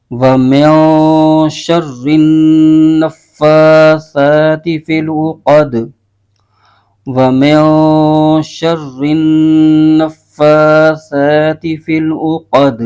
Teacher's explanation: یہاں پر وقف کریں گے تو دال کی زیر ختم ہو جائے گی اور دال ساکن ہو جائے گا، اور دال حروف قلقلہ میں سے بھی ہے اور اس کو پڑھتے ہوئے قلقلہ بھی ظاہر ہوگا۔